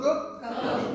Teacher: आपका soft palate और जीभ टच कर रही है आपस में, फिर हवा बाहर आ रही है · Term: पैलेटल वेलर साउंड